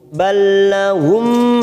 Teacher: Masuk pada huruf lam langsung balla tanpa ditekan, tanpa mendengung. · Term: idgham mislain